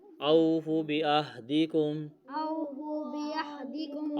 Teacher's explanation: اوفو بعہدکم، اوفوا بعہدکم، اوفی، اوفی، اوفی، اوفی اوفی، بعہدکم، بعہدکم، او واو مدہ ہے، بعہدکم ہا ہے جھٹکے کے ساتھ پڑھیں گے، ہا کی آواز کے ساتھ پڑھیں گے۔